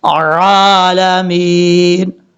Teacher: عین کو کلیئر کرنا ہے، حمزہ کی آواز نہیں آنی چاہیے